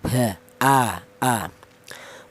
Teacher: pangkal tenggorokan ditempati dua huruf yaitu huruf hamzah dan huruf ha